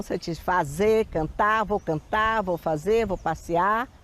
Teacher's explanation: o r às vezes perde vibração quase desaparece